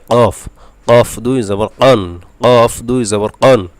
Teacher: এরপরে হলো 4 নম্বর মাখরাজ, জিব্বার গোড়া তার বরাবর উপরের তালুর সাথে লাগবে